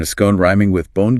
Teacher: The long O sound in scone is associated with received pronunciation or RP,